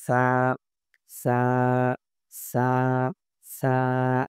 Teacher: জিহ্বার আগাটা দাঁতের আগার সাথে উপরের সানায়া উলিয়া দাঁতের উপরের দাঁতের সাথে মিলাইয়া দেন।